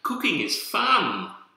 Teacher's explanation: you can um sound positive using Rising intonation